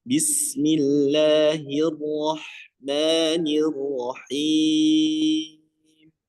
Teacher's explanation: Dan juga huruf ro di sini memiliki sifat takrir. Takrir itu getaran dan memiliki dua getaran saja ya